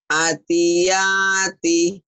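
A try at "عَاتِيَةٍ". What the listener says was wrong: A-nya panjang.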